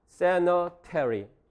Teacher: t가 2강세 앞에 있습니다. 2강세도 강세니까 플래핑이 안 일어나고요.